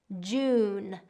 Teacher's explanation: Again, we have that j is a burst sound. June, and we want to round the vowels for that oo sound.